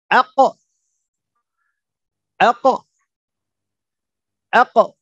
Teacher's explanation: dalam keadaan sukun maka kita akan tambahkan disitu ada pantulan atau yang sering kita sebut dengan Qalqalah